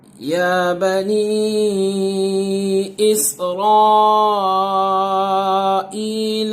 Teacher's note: مد جس ورڈ میں ہے اس کے دوسرے ورڈ میں حمزہ آ رہا ہے، یعنی دوسرے کلمے میں حمزہ آ رہا ہے، تو یہاں مد منفصل ہوگا، 3 الف کے برابر کھینچیں گے